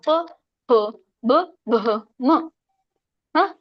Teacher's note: ವರ್ಣಗಳು ಅಂತ ಕರೀತಾರೆ ಅಂದ್ರೆ ತುಟಿ ತುಟಿಯಿಂದ ಹೇಳ್ತೀವಿ ನೋಡಿ ನಾವು ಪಬ್ ಬ ತುಟಿ ನೋಡಿ ಎರಡು ಕೂಡುತ್ತಲ್ಲ ಅದಕ್ಕೆ ಓಷ್ಠ್ಯ ವರ್ಣಗಳು ಅಂತ ಕರೀತಾರೆ. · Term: ಓಷ್ಟ್ಯ ವರ್ಣಗಳು